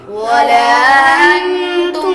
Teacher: نون ساکن کے بعد تا حروف اخفاء میں سے آ رہا تو غنہ کر کے پڑھیں گے. میم پر غنہ نہیں ہوگا.